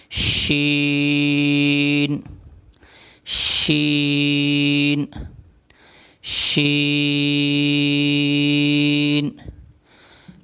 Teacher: زبان کا درمیان والا حصہ اوپر والے تالو سے لگے تو یہ ادا ہوتا ہے